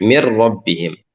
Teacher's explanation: maka nunnya hilang ya. Termasuk sifat gunnahnya nun juga hilang. Kenapa? Karena langsung masuk kepada huruf ra, huruf berikutnya. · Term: idgham kamil